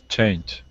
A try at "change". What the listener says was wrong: Good, good. Nice job.